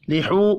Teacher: واو مدہ ہے, 1 الف کے برابر کھینچ کر پڑھیں گے